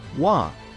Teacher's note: The W here is soft, almost like a V sound but with a different tongue position.